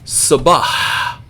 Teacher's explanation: you have to learn to end a word with that breathy H sound that is simply something we would never do in English you'll